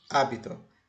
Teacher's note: Hábito, o acento prosódico e o acento escrito está no A.